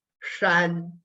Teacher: My tongue curls up and the tip of my tongue brushes ever so softly the palate in my mouth.